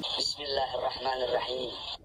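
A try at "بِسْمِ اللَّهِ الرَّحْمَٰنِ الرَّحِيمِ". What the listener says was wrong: Bismillahirrahmanirrahim. Di sini terdengar seperti ra-nya seperti dibaca tarkik ya, dibaca tipis. Jadi ra dibaca ra. Tak kurang tebal ya. Ro. Bismillahirrahmanirrahim. Bismillahirrahmanirrahim. Nah, di situ huruf matnya juga matnya kurang ya. Matnya kurang. Kebetulan di yang terakhir itu ada mad asli ya. Paling pendek 2 harokat, paling panjang 6 harokat karena ada huruf yang disukunkan. Jadi dari mad asli menjadi mad arid li sukun. Seharusnya Bismillahirrahmanirrahim.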